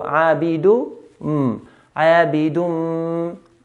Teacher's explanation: So what we need to do is remove the noon, cancel the noon, and so we skip the noon. So dal will go straight to the mim and hold the mim. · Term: idgham with ghunna